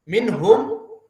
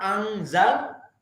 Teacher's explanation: Kenapa dia tidak jelas? Karena ikhfa makhrajnya hampir dekat dengan nun.